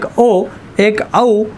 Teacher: कंठ व होठ यांच्या मदतीने उच्चार होणारे वर्ण म्हणजेच कंठ ओष्टेय वर्ण